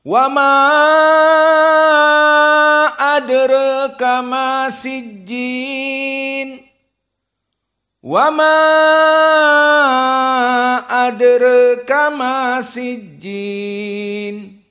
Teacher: Adapun qiraah Wars sama, panjang tetapi dalam keadaan at-taklil, tidak al-imalah al-kubra.